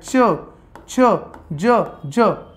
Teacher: च छ ज ज यांचा उच्चार य ने युक्त होतो, तेव्हाच त्याला तालव्य वर्ण असे म्हणतात. म्हणजे बघा, उच्चार त्याचा करताना असं करायचा आहे, च छ ज ज.